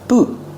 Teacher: With the T at the end, it's a stop T. Boot. Stop the air with your tongue.